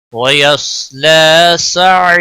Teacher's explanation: हुरूफ मद्दा बनता है, एक अलिफ के बराबर खींच कर वक़फ़ करेंगे, रा पूर पढ़ा जाएगा, वक़फ़ बिल इब्दाल होगा